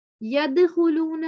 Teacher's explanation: دال پہ جزم ہے، اس پہ کلکلا کریں گے